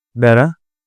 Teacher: the r sound, which is the flap or tap